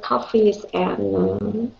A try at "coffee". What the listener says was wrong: Coffee. So ít thầy, coffee. Không, đừng có xì, coffee.